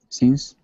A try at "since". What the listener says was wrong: Okay, so just watch your eye. You're doing this E still a little, and you should be doing your short I. Eh, fish, since. So just watch that a little bit. You were doing it kind of throughout, where you're often sort of somewhere in between the eh and the E. You're like, fish, fish. So it's almost right, but not quite.